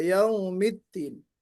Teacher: जब नरमी से अदा करेंगी दाल को तो वो दाल थोड़ा सा ता की तरह हो जाएगा